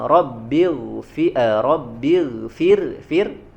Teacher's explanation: huruf ro-nya di sini dibaca Rabbil fir tipis ya, karena sebelumnya harokat kasroh